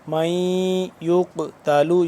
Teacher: قاف کیونکہ حروف قلقلہ میں سے ہے اور اس پہ جزم بھی ہے، یا جزم ہے تو یعنی کہ قاف ہو گیا ساکن، تو اس کو ہم قلقلہ کریں گے اس پہ۔